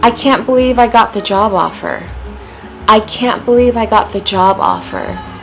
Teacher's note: Starting out high, lots of energy, falling by the end.